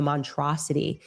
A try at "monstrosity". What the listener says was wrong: There's definitely an S in there.